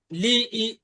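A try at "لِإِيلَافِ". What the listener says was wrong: লি ই টান আছে ভাই লা টান আছে বলেন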